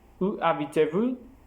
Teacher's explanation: C'est descendant dans un énoncé interrogatif ouvert avec un mot interrogatif comme quand, pourquoi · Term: intonation